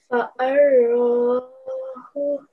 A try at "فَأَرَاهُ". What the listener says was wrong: Okay, don't join the alif with the ra. Fa'a. Rahu. Fa'arahu.